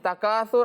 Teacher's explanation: سا پر آپ نے سیٹی نہیں کرنی